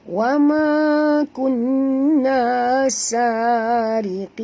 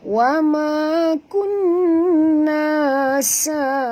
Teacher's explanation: Ya, kita berhenti dengan mad arid li sukun dan bunyikan nun yang mati di hujung ini dengan jelas